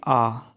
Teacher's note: आपका जो ओट है उनका उपयोग यहां पर नहीं हो रहा है